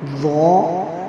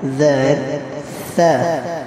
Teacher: یہ تینوں لیٹر مخرج نمبر 13 کے ہیں۔ ضو جو ہے وہ ہیوی ہے اور زال اور ثا جو ہے وہ سافٹ ہے۔ اور ضو بھی سافٹ بھی ہے اور ہیوی بھی ہے۔